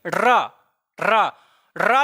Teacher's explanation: जब आप रा कह रहे हैं तो जीभ कपकपाने के साथ साथ जीभ मुंह के अंदर मुड़ भी रही है, मुड़, देखिए रा रा रा जब कह रहे हैं जीभ कपकपा रही है और अंदर मुड़ रही है, तो कपकपाने के कारण इसे प्रकंपित और मुड़ने के कारण इसे लुंठित कहते हैं।